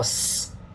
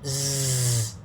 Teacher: S is unvoiced, right? So you can make it voiced by vibrating. It's z, the Z sound, okay?